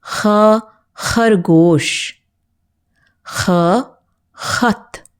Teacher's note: there is a puff of air that comes from the back of the throat to make this particular sound. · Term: Khakke pair bindi